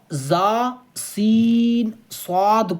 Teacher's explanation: ان 3 حروف زا، سین، صاد کو ادا کرتے وقت سیٹی کی طرح تیز آواز نکلتی ہے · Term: حروف صفیریہ